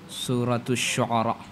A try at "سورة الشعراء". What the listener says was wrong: شعراء نہیں عین ہے کیا شعراء بول رہے کیا بول رہے